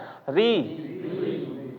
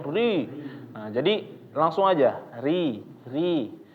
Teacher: ro digusi ya digusi sini di atas gigi ya di atas gigi atas